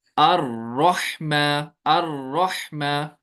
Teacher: Vibration जैसी होती है इसको प्रोनाउंस करते वक्त। हमें ज्यादा वाइब्रेशन नहीं करनी है रॉ को अदा करते वक्त, बल्कि बहुत कम करनी है। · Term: सिफत तकरीर